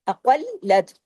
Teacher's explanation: क़ाफ को हैवी, क़ाफ को लाम के साथ जोड़ना है